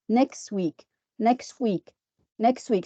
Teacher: And the word next week, we have two consonants here at the end of one word and at the beginning of the second word. So we omit one of these, and this is elision